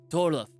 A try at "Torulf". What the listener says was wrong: You keep putting the L before the U. It's like Ulf. Ulf. Ulf.